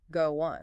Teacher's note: a tiny connecting sound sneaks in, like a little W or J sound